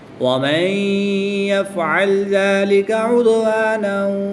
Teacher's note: نون ساکن کے بعد یا حروف یرملون میں سے ہے تو یہاں پر ادغام مع الغنہ ہوگا۔